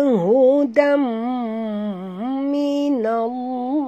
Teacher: masukkan bunyi tanwin ke dalam mim disertai dengung dua harakat idgham ma'al gunnah